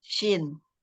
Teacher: ada titik tiga yang bawah syin Heeh syin Ini dia makhrnya ada di tengah lidah bertemu dengan langit-langit Tengah tapi bertemunya dia tidak sampai menempel ya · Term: huruf syin, huruf shin